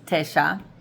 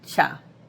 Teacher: that first vowel can reduce down to a schwa, and it can sound like cha.